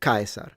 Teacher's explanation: So the S is a S, and then the rolled R, stress at the beginning, C like a K